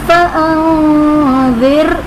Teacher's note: فانذر میں نون ساکن کے بعد حروف اخفا میں سے رال آ رہا ہے تو یہاں پر اخفا کریں گے یعنی غنہ کر کے پڑھیں گے. اور را ساکن ہے اس سے پہلے زیر اصلی اسی کلمے میں ہے تو اس لیے را کو باریک پڑھیں گے.